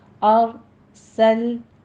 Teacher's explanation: سل پہ قلقلہ نہیں کرنا، سٹاپ کرنا ہے اس کو